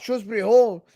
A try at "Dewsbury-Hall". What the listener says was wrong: Stop calling him Shrewsbury Hall. His name is Dewsbury Hall. D-E-W. Where you make your own pronunciation? His name is D-E-W. طيب, why are you saying Shrewsbury Hall? Dew. Mountain Dew.